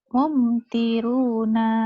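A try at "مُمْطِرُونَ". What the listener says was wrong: pendek. Yang panjang ini doang. Ditekan dipanjang. Ya latihan itu di mad itu ditekan dan ditahan. Ini nggak ada yang panjang. Tahannya ke sini.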